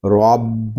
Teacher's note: را کے اوپر زبر ہے، اس کو پر پڑھیں گے. با مشدد ہے، اس کو کلکلے کے ساتھ جماؤ کے ساتھ ادا کریں گے.